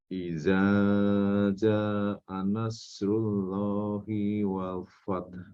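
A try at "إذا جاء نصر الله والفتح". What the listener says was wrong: Tapi mohon dilihat di sini ada huruf ja agar dipanjangkan. Ya, ini terkait panjang pendek. Idza ja, jangan sungkan untuk memanjangkan lebih panjang. Setiap yang Pak Ponco jumpai ada tanda pedang seperti itu ya, tanda bendera.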